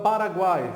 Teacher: E na sílaba guai, eu vejo 3 vogais, mas os sons vocálicos me diz que apenas o A é vogal plena e o U e o I são semivogais, ou seja, eu tenho aqui um tritongo.